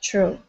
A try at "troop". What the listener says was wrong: make sure to pronounce that P